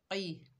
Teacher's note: कौफ जो है हरूफ इस्ताला में से है तो मोटा अदा होगा, की नहीं पढ़ेंगे क़ी।